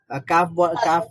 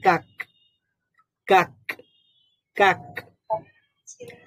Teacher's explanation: আসবে নাকি ক এর মত আসবে হ্যাঁ ক এর মতই আসবে ক বলার পরেও একটা বাতাস থাকে কাফ কাফ এটা যেহেতু হামসের হরফ ক বলার পরেও একটা বাতাস